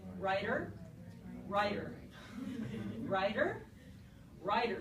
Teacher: we don't really whack the back of our teeth or that ridge behind our teeth with our tongue in a really sharp way we get lazy and we just go flat our